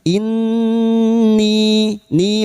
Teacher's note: nun dengan tashdid, gunna musyadah (suara sengau) sebanyak tiga harakat. Inni, ni, mad ketemu hamzah dengan kata lain (mad jaiz munfasil), memanjang empat atau lima harakat.